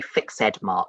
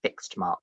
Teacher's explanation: normally you just say fixed as one syllable